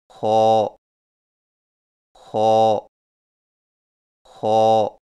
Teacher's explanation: خو کی ادائیگی میں زبان کی جڑ کو تالو کی طرف بلند کرتے ہوئے موٹی آواز میں پڑھیں